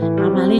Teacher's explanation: mad tabi'i dibaca panjangnya 2 harakat karena ada kasroh bertemu dengan ya sukun. Ya sukunnya ya.